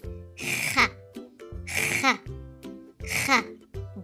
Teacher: Kha sound is pronounced from top throat. So it's the throat letter.